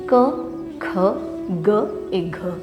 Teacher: Ce sont des sons gutturals ou vélaires